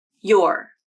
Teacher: Or you're using the unstressed ER vowel. I think the more common pronunciation is you're using the OR vowel, and that is how I pronounce this word.